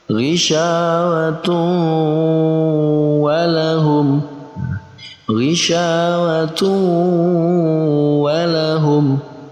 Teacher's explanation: Maka kita baca dengan idgham bi gunnah. Kita dengungkan, kita gabungkan antara tanwin dan wawu, lalu kita dengungkan.